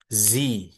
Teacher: Huruf zanya harus benar-benar getar.